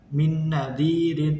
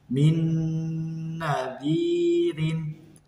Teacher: Nah, jadi cara membacanya sama, yaitu dimasukkan ke huruf depannya disertai dengan dengung selama 2-3 harokat. Jadi tidak boleh cepat-cepat, tidak boleh min nadirin, tapi harus ditahan selama 2-3 harokat.